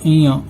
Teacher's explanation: अगर हम तालु से बोलेंगे तो अइया निकलेगा।